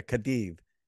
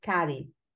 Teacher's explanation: The C's and Z's are pronounced with a slight th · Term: TH sound